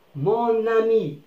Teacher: certaines voyelles nasales peuvent dénasaliser quand leur N se lit